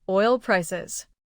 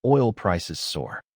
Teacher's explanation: The first tells what kind. Stress the first noun oil prices. That stress helps you hear the compound in fast news.